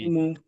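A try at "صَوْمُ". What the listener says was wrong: টান দেওয়া যাবে না, সৌমু।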